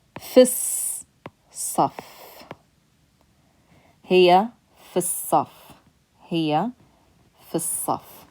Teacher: Because we're skipping over this hamzatul wasl. You can't pronounce the lam because the next letter is a sun letter. So we skip straight to that sun letter that has the shadda.